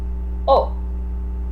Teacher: makes a special sort of sound that is halfway between the all in awesome and the O in over there so if you kind of try and meet those two halfway